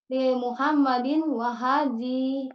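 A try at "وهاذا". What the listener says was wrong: Wahada. Wahada. Bukan hadi.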